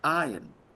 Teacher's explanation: When we pronounce I-R-O-N, there R is not pronounced, it's silent.